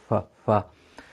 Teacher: pronounced with the central incisors touching the inside of the bottom lip, or what we call the wet part of the bottom lip.